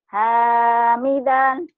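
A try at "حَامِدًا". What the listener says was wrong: Hamidan, jangan ditahan. Hamidan, jangan. Hamidan, kayak orang judes. Kayak orang Judas. Kayak orang yang lagi pusing. Nah, kayak orang lagi pusing ditanya. Kan beda, beda ya nadanya, nada lagi kesel sama nada lagi sabar.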